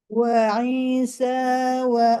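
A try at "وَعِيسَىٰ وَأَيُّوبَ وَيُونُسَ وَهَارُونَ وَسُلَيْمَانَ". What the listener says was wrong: wa Iisa terlebih panjang.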